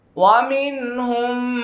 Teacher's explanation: মিম সাকিনের পরে মিম আসছে ইদগাম শাফাউই গুন্নাটা করে নেবেন